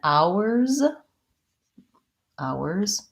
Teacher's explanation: about there being a little hidden W in there or because as I closed on the ow and I opened back for the our my lips end up gliding and making a bit of a w sound there